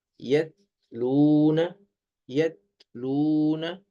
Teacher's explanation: تا کی آواز باریک اور بغیر جھٹکے والی ہوتی ہے